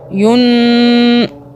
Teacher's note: نون کو ہم 2 سیکنڈ کے لیے ہولڈ کریں گے، منہ میں رکھیں گے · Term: اخفا